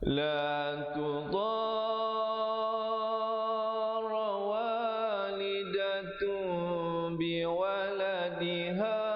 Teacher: bila datang ba, tukarkan bunyi nun kepada mim yang nipis. Walidatu, bibirnya sekadar bersentuhan saja. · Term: iqlab